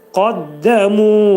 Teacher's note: Qaddamuda qaf qalındır, dəl incədir.